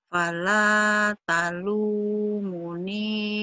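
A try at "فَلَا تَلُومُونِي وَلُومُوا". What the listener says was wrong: Bukan, munya juga panjang. Fala talumuni walumu. Panjang, munya panjang. Ada matobi'i kan?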